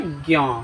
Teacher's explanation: तो ज कहाँ से आता है, ज तालु से, तालु से आता है, प्लस में क्या, य कहाँ से आता है, य देखिए यहाँ, तालु नासिका, तालु नासिका, समझ, तालु नासिक, दोनों से कैसे, ज्ञ, तालु से भी और नाक से भी